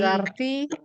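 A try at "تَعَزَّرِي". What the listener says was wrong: bukan ti. Ri. Ta'azzari.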